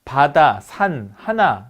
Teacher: 자, 전설, 평순, 저모음이고요. 입을 아주 크게 열고, 네, 혀를 아래턱에 붙여서 내는 이런 소리들을 우리가 전설, 평순, 저모음이라고 합니다. 자, 바다, 산, 하나, 뭐, 이렇게 할 때, 모음 전부 다 전설, 평순, 저모음이에요.